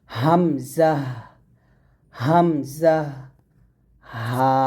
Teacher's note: কণ্ঠনালীর শুরু থেকে আমরা হামজা এবং হা এই দুটি হরফ উচ্চারণ করব